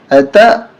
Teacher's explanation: جھٹکا دیں گے یہ حمزہ ہے الف نہیں